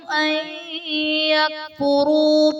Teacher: نون ساکن کے بعد حروف یرملون میں سے یا آ رہا ہے تو یہاں پر ادغام مع الغنہ کا قاعدہ ہوگا، یعنی نون ساکن میں ہم غنہ کر کے پڑھیں گے۔